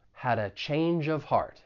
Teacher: We can link that first phrase, had a, as well as that second phrase, change of. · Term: linking